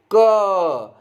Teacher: तो आपको इसमें 2 आवाज आ रही है, एक ये क की, ठीक है, और एक आपको अ की आ रही है